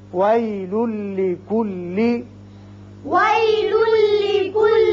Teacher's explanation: لام کے اوپر دو پیش تنوین ہے، اس کے بعد لام آ رہا ہے. یہاں ادغام بغیر غنہ ہوگا، ایک لام پڑا جائے گا